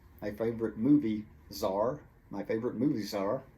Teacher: the S from movies jumps over to the word are